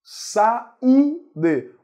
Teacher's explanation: O U é mais forte, forma hiato com a vogal anterior.